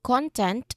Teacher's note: when we stress in the first syllable content that is a noun